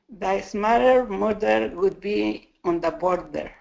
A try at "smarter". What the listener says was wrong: Not bad. This was your weakest one. Try this. Smarter. More R.